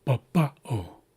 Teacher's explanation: So looking at the accent placement we start high or we start low go high and low